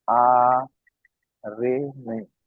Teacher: সাকিনের ডান দিকে নিচের দিকে জের এসছে, একে ইয়া মাদ্দা বলে। ইয়া মাদ্দা এক আলিফ পরিমাণ টান দিয়ে পড়তে হয়।